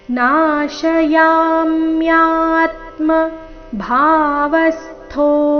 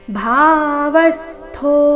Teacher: ನಾಶಯಾಮ್ಯಾತ್ಮ ಭಾವಸ್ತೋ ಭಾ ಮಹಾಪ್ರಾಣ ದೀರ್ಘ ಇಲ್ಲಿ ಭಾವ ಬೇಡ ಭಾವ ಭಾ ಸ್ಪಷ್ಟವಾಗಿ ಕೇಳಿಸಬೇಕು ಭಾವಸ್ತೋ ವ ಮೇಲೆ ಆಘಾತ